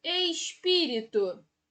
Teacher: Em espírito, qual é a sílaba tônica? É o pi.